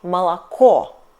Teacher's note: We write it молоко. Last O is stressed and we pronounce it like O.